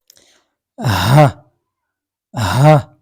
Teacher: glottal H sound, a sound that is produced from glottis or vocal cords area, making sound like ha, ha. · soft ha, called pharyngeal fricative, making sound like ha, ha.